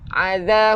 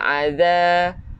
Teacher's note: hujung lidah keluarkan sikit untuk zal